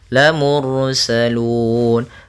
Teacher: ada ra sukun didahului dengan dhammah, maka ra-nya ra tafkhim.